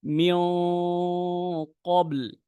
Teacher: যেমন আমি যদি বলি মোটা করে সঠিকটা বলি, তাহলে দেখেন আমার গুন্নাহটাও মোটা হচ্ছে, প্লাস মুস্তালিয়ার হরফটা সেটাও আদায় হচ্ছে।